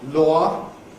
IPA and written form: lɔə (law)